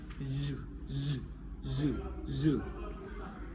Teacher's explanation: Nama bunyinya itu voice alveolar fricative, yaitu place of articulation alveolar, manner of articulation fricative, and voicing voice. Contoh katanya itu zu, zu, zu, zu.